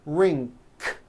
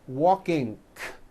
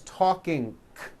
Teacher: the bad habit of adding a K release sound, k, k, like that, after an NG ending. For example, in the word ring, it becomes ring, k.